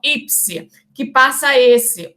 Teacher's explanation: O S assimila o P, tornando o P idêntico. Então, aqui nós temos uma assimilação total regressiva.